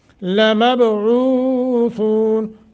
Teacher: لمب، باس ساکن ہے، قلقلہ کر کے۔ لمبعوثون، عو حروف مدہ، ثو بھی حروف مدہ مگر مد عارض بھی بنتا ہے، اس کو طول توسط قصر تینوں حالتوں میں کوئی بھی ایک کر سکتے ہیں۔